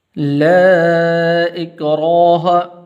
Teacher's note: یہ لا اس کے اوپر چھوٹی مد ہے تو اس کو ایک الف برابر لمبا کرتے ہیں۔ لا اکراہ، را کے اوپر زبر ہے تو اس لیے آپ نے اس کو پر کر کے پڑھنا ہے۔